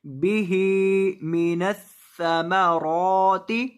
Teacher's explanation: را کو ایک الف کے برابر لمبا کریں گے کیونکہ اس کے اوپر کھڑی زبر ہے